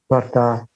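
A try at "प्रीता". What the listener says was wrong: No, it's a R with a dot under. Prita.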